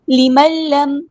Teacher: نون ساکن کے بعد دیکھیں لام آیا، نون کے بعد لام، ادغام بلا غنہ